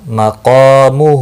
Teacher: یہاں پر بھی ہے قا، مد بھی ہے، ایک الف کے برابر کھینچنا ہے، ہا کو بھی کھینچنا ہے الٹا پیش کی وجہ سے۔ مقا، میم پیش مو، ہا الٹا پیش ہو، مقامہ۔